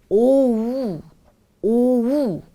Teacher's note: O가 아닌 오우 라고 우리가 느끼기엔 2개의 음절을 천천히 연결해서 발음을 해주는 소리가 바로 이 O의 long vowel 소리입니다.